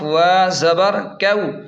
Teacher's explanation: یہاں واو لین ہے تو اسے بھی جلدی اور نرمی کے ساتھ پڑھیں